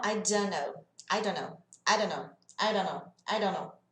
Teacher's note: Na verdade, não é som de R, é um som de D bem leve, como se a gente falasse d, da, do, de, do.